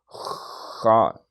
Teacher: خا میں اس کی صفت میں بھی ہے خراٹا تھوڑا سا